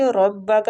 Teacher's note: را زبر کی وجہ سے پور پڑھیں گے